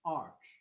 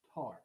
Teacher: So arch is fully open, arch, and then torch is slightly more closed